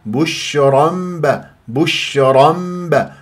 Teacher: مفخمه لانها تنوين وفتح جاء بعدها باء بين اقلاب الى ميم النون الساكنه او التنوين اذا جاء بعدها باء تقلب الى ميم